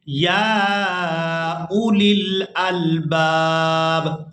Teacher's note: یہاں پر ہم نے حمزہ کو بغیر کھینچے ادا کرنا ہے، واو کو ادا نہیں کریں گے، اور اس کے بعد لام کو لام ساکن کے ساتھ ملائیں گے۔